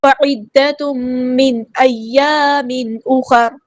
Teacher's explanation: تنوین کے بعد میم آئے ادغام مع الغنہ ہو رہا ہے